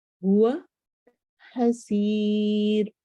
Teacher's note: سین سیٹی والا حرف ہے اور را آخر میں باریک ہوگا